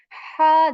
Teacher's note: there is this letter ha which comes from the middle portion of your throat you how you articulate it is that you push air out